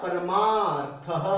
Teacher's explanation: दो ह्रस्व अ हैं, उसको जोड़ा तो दीर्घ आ बन गया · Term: दीर्घ संधि